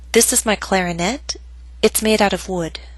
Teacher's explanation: These 2 examples show how in everyday speech people sometimes use rising intonation because they're forming their thoughts as they speak. The rising intonation tells you, the listener, that they're probably going to add information to what they've already said.